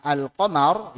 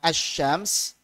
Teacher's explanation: kalau cara bacanya sebagaimana al-qamar, yaitu lamnya jelas, maka disebut qamariyah. Kalau bacanya dia melebur sebagaimana asy-syams, bertasydid seperti ini, maka namanya syamsiyah.